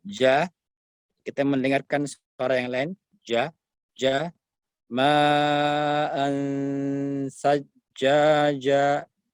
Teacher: Huruf ja tengah lisan, tengah lidah kita ini, ya, diangkat ke atas langit-langit. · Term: jim yang fasih